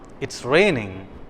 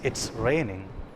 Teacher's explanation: The first one, it's raining, which has a rising tone. The tone is rising, whereas in the second case, it's raining. The sentence has taken a falling tone.